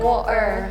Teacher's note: The T is totally gone.